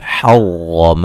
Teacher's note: را کو موٹا ادا کریں گے، را مشدد ہے اور زبر والی ہے